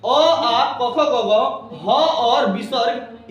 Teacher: आ, ह और विसर्ग का उच्चारण स्थान कंठ से होता है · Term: कंठ वाले वर्ण